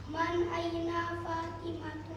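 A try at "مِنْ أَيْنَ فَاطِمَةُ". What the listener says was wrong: Nah, man atau min? Min atau man? Min. Jadi min ya, min aina Fatimatu.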